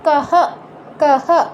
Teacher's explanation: কিংবা বিসর্গের পরে যদি আপনার কোনো স্বরবর্ণ থাকে, সেই ক্ষেত্রে আপনার বিসর্গের উচ্চারণটা হবে হয়ের মতো, পূর্ণ হয়ের মতো